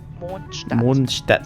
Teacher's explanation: So a soft D at the end of Mond, followed by a harder but not sharp T sound in Stadt.